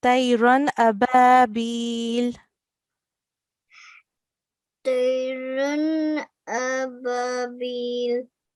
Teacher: Just to highlight that we do not prolong the alif.